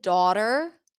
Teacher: In some dialects, you will hear it more rounded. Daughter, like East Coast, British, but you can totally pronounce it with the as in father.